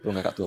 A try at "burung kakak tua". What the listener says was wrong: Burung kakak tua. Aku ajarin kamu cara ngomongnya. Burung kakak tua. Bukan kakak tua, dijadiin satu. Jangan berhenti.